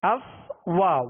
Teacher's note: فا کو اس کے مخرج سے ادا کیا کہ اوپر کے دانتوں کے کنارے اور نچلے ہونٹ کا تر حصہ